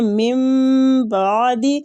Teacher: اقلاب کا معنی ہوتا ہے نون ساکنہ کے بعد اگر با آ جائے تو ہم نون ساکنہ کو میم میں بدل کر پڑھتے ہیں